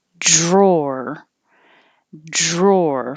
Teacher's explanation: once i pull my tongue back for the first r i hold it in that position for the second r